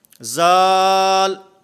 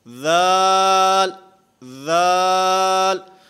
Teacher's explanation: ذال میں اس کی ادائیگی میں زبان دانتوں سے ٹکراتی ہے، دانتوں کے ساتھ زبان لگتی ہے، اور پھر خصوصاً بچے جس وقت اس کو پڑھتے ہیں تو وہ پڑھتے ہیں زال، یہ زال نہیں ہے، ذال، ذال۔